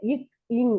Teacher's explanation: நாவுடைய அடியும் அன்னத்தின் முதல் பகுதியும் ஒன்று இணைவும் போது பிறக்கின்றது